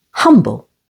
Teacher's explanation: humble, with the stress on the first syllable